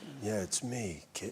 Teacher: it's actually kind of a very breathy low register bedroom voice